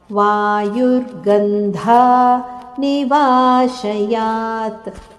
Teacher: ಅಂತ್ಯದಲ್ಲಿ ತ ಅರ್ಧ ಅಕ್ಷರದ ಉಚ್ಚಾರಣೆ